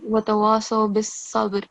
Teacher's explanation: on top of ba, make sure that you perform a jerking sound, kalkala.